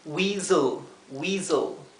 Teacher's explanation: traten de que la E sea casi imperceptible. Es como si pasáramos del Z, del zumbido de la S, a la L. Casi como si no tuviéramos una vocal, porque la vocal es muy cortita.